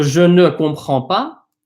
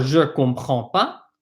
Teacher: They drop that ne.